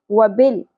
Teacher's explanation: لام ساکن پہ قلقلہ نہیں ہونا چاہیے